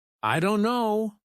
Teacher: Instead of pronouncing every letter, many native speakers say, "I don't know." The t sound is dropped completely. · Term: dropped sounds